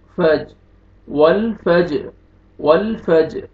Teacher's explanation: والفجر والفجر، لام کو آپ نے ملانا ہے واو کو لام کے ساتھ، لیکن لام کو آپ نے ہلانا نہیں ہے، ول ایسے نہیں پڑھنا، ول۔ جیم حروف قلقلہ میں سے ہے، ڈبل ساؤنڈ آئے گا